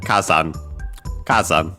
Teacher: actually, accent on the first syllable